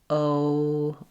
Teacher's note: So in your language, O is going to be shorter and it's not going to change position. Whereas in English, O, my tongue raises and my lips get less pursed. O, they close a little bit as my tongue raises in English. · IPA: /oʊ/